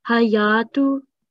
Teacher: And I think on this word, al-hayatu, you said hayatu. So because there is no shadda on ya, you don't need to stress on the ya.